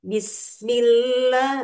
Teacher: usahakan sinnya itu harus jelas bis harus ada desisan ya. Bismillah milla juga ada tasdid.